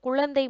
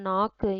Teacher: ஆனா லாஸ்ட் நம்ம பார்த்தோம் இல்லையா, நாக்கு, இதுல கூவானது இறுதி எழுத்தில் வரும் பொழுது நமக்கு ஒரு மாத்திரை அளவிலிருந்து குறைந்து அரை மாத்திரை அளவாக ஒலிக்கும் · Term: குற்றியல் உகரம்